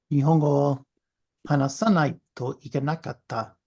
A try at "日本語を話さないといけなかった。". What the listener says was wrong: Good, good, good, good, good.